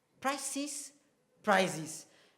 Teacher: The difference is between the s sound, prices, the price and of course prizes, the prize, the z sound there.